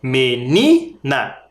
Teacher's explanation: E menina é paroxítona, a penúltima sílaba tônica.